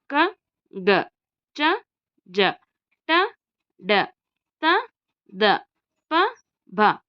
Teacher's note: ಅಲ್ಪಪ್ರಾಣ ಅಂದ್ರೆ ಕಡಿಮೆ ಉಸಿರಿನಿಂದ ಉಚ್ಚರಿಸುವಂತಹ ಅಕ್ಷರಗಳು